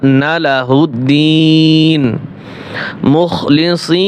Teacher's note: মুখলিসিনা লা টান দেওয়া যাবে না